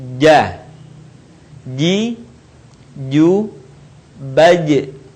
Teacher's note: Huruf ini dilafalkan dengan menyentuhkan tengah lidah kita ke daerah langit-langit.